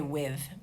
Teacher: The word with in America has a blown TH. In parts of the UK, they say with. It's a buzzed TH.